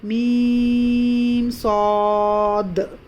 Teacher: اس کے بعد ہم اس میم کو کھینچیں گے، میم، اس میم کے بعد پھر ہم کو رکنا نہیں ہے، اس میم کے بعد ہم کو اظہار ہو رہا، ہمارا یہاں پر کیا ہو رہا، اظہار شفوی، میم ساکن کے بعد صاد آ گیا تو کیا ہو رہا، اظہار شفوی